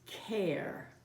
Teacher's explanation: we have the bossy R now the bossy R is that the R sound takes over and changes the vowel sound